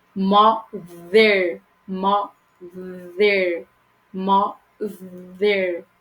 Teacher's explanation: Aí mother já tem o outro que vibra. É como se fosse um V. Língua entre os dentes e faz vibrar.